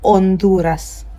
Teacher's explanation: You do not pronounce the H sound. Anytime you see H, don't pronounce it. H is silent in Spanish. So this word right here is going to be pronounced as Honduras.